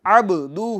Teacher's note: با میں قلقلہ ہوگا، آواز لوٹے گی